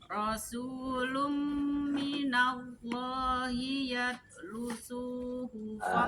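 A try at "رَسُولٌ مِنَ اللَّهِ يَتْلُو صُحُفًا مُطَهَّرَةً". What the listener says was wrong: Panjang. Yatlu.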